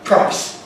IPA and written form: praɪs (price)